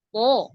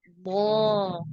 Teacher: itu di dalam ketebalannya itu ee karena naiknya pangkal lidah gitu Jadi bukan karena dibantu monyong mulut tapi karena kita menebalkan dari dalamnya lidahnya kan naik ya Maka hasilnya akan menebal gitu suaranya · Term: huruf tebal